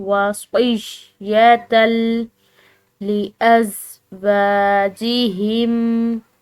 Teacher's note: واو کو ہم نے لمبا کھینچا ایک الف کی مقدار ، یہ درمیان میں آنے والے الف مدہ کی وجہ سے۔